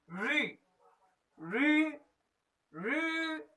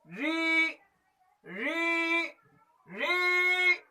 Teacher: रिकार को भी ऋतु रसा मूर्धन्या अर्थात इसे मूर्धा से बोला जाता है।